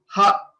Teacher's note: So while we are saying ha, there is no restriction of the air anywhere. So the air which comes from our stomach comes out without any restrictions. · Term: aspirate